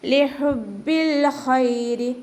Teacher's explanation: ഹ തൊണ്ടയുടെ മധ്യഭാഗം വസത്തുൽ ഹൽക്ക്, അപ്പോൾ അതിൻ്റെ സൗണ്ട് ക്ലിയർ ആക്കുക. ബാക്ക് ശബ്ദ വന്നിട്ടുണ്ട്, അപ്പോൾ 2 ഹർഫുകൾ ഉച്ചരിക്കുന്ന കനം കൊടുക്കുക.